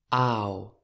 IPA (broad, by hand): aw